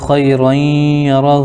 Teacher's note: را کے اوپر دو زبر ہے, دو زبر کو تنوین کہتے ہیں. تنوین کے بعد حروف یومن میں سے یا آ رہا ہے اس لیے ادغام یرملون مع الغنہ ہوگا جس کو ادغام ناقص بھی کہتے ہیں.